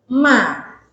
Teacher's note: jadi ketika mengucapkan ma jangan sampai maah nanti jadi tebal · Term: istifal